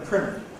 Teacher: American English optionally deletes T after N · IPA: ˈprɪnɚ